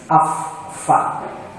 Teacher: Mengucapkan huruf fa itu harus keluar angin, desis. Fa. Karena huruf hams.